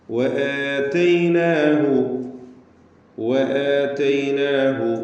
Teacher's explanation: വആതൈനാഹു, വആതൈനാഹു, വാവ് രണ്ട് ചുണ്ടുകളിൽ നിന്ന് തന്നെ വരണം, സൂക്ഷിക്കുക. എന്ന് ചുണ്ടുകൾ കൂട്ടി അല്ലെങ്കിൽ കൂർപ്പിച്ച് വെച്ച് വൃത്താകൃതിയിലാകുന്ന അവസ്ഥയിലാണ് വാവ് ഉച്ചരിക്കുമ്പോൾ ഉണ്ടാവുക.